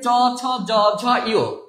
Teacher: এইবার দেখেন, এই যে চ ছ জ ঝ ইয়, এই যে জিহ্বার অগ্রভাগ একটু প্রসারিত হয়ে দন্তমূলের একটু উপরে যে তালু আছে সেই তালুতে স্পর্শ করে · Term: তালব্য ব্যঞ্জন